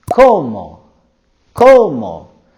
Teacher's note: they're going higher with their voice and intonation